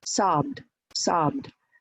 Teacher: the schwa, the letter E is almost gone, and you just go to D. So it's from B to D, sobbed, sobbed.